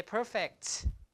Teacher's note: the puff of air is not really released